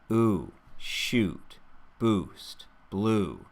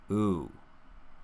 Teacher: You can see that my lips are rounding forward and relaxing back to help me make this ooh sound clearly. Ooh. That relaxing back is actually an important part of the vowel sound.